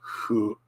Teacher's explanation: hu is actually hu, a very light F sound